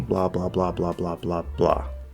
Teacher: silence we start talking blah blah blah blah blah blah blah we fall at the end why because we're returning to that silence it makes your statement feel complete